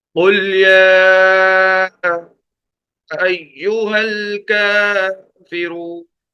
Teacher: آخر میں جو زیادہ کھینچ رہے ہیں وہ مد عارض کی وجہ سے، کہ مدہ، حرف مدہ کے بعد اگر کوئی ساکن حرف آ جائے تو وہاں مد ہوتا ہے۔ · کافرون کے اندر ایک کھڑا زبر ہے، ایک آگے واو مدہ ہے، اور کھڑا زبر اور واو مدہ دونوں کو برابر کھینچ کر پڑھیں گے 1 الف کے برابر